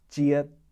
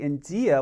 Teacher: you'll notice that j sound is a front or slender d sound and the reason that is is because d is immediately followed